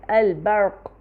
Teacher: را کا مخرج آگے سے اوپر اٹھ کے سیدھا لگ رہا ہے منہ کی چھت کو، جس کی وجہ سے را میں تکرار پیدا نہیں ہو رہی